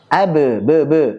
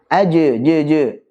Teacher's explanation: Ini kan suara taklil ya, suara yang mendekati fathah. Bukan fathah tapi mendekati fathah.